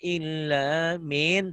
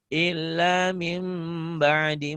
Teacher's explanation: N-nya berubah menjadi M, iklab